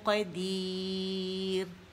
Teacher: نے یہاں را باریک کیا کیونکہ یا مدہ آ رہا ہے، جب یا مدہ آتا ہے را باریک ہو جاتی ہے